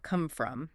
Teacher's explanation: Well, phrasal verbs like come from often link together smoothly. The M in come might connect a bit to the F in from come from. Not usually a big gap between them, right?